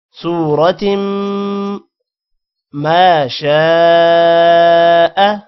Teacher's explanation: صورت، صاد کے بعد واو ہے لمبا کریں گے، اور صاد کو موٹا بھی کرنا ہے، را کو بھی موٹا کرنا ہے، اور واو کے علاوہ کسی بھی ورڈ کو لمبا نہیں کرنا.